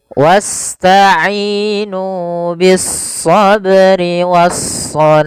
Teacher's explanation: pada lafal shah kita boleh membaca sepanjang dua harakat atau empat harakat atau pula enam harakat karena dia kita hukumi dengan mad arid di sukun.